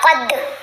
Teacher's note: ٹھیک ہے، اگر آپ پڑھتے ہیں نا قد تو کلکلا نہیں ادا ہوا، دال ہلا ہی نہیں، دال کی آواز کو ہلانا ہے ہم نے